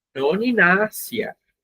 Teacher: esse S tem sempre som de S, nunca tem som de Z